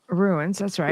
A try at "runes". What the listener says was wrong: Yeah, no, not ruins. It's runes, like the rune stones. symbols. Okay, it sounded like ruins both times.